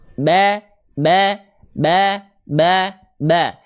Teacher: huruf tipis Kenapa dia bisa jadi tipis karena pangkal lidahnya standby rileks di bawah tidak terangkat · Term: istifal